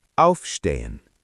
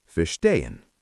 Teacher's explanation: when you speak, you put the stress on the prefix